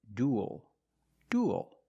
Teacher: it ends with a dark L, because the L is after a vowel at the end of a word.